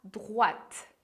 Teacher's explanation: a pronúncia de droite, você tem que lembrar que o OI vai fazer som de UA